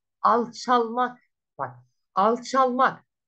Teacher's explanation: Alçak isminin sonundaki K unsuru düştü. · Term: ünsüz düşmesi